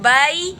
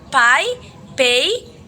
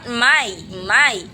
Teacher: Number 1, bilabial sound, PBM. These consonant sound are produced by putting two lips together, as in sound B in the word by, P in the word pie, pay, and M in the word my.